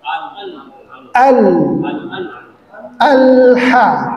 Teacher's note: yang pertama pengucapan huruf lam sukun ya itu lidahnya ke langit-langit.